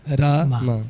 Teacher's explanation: First long A, then short A.